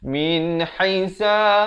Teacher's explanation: Jangan dipanjangkan. Min haisa, ha pedas, makhrajnya di pertengahan kerongkong